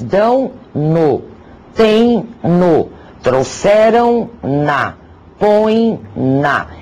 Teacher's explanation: Se, entretanto, a forma verbal terminar em ditongo nasal, aquele pronunciado um pouco pela boca, um pouco pelo nariz, o pronome vai assumir as formas no, na, nos, nas.